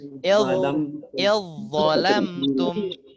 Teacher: jadi cara bacanya zalnya macam hilang, langsung masuk dha sabdu ya.